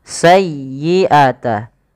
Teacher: tekan di huruf ya-nya karena dia ya tasdid dan lembutkan ya